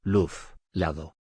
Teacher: L. Representa el sonido lateral alveolar.